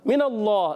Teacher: اللہ کے لام سے پہلے زبر آ رہا ہے، اللہ کا لام موٹا پڑھیں گے